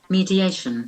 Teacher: there are four syllables, and the accent falls on the third syllable